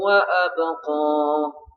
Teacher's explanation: Khairun mad lin. Wa abqa ba sukun, ba itu termasuk qalqalah ya, karena di sukunnya sukun asli disebut qalqalah sughra.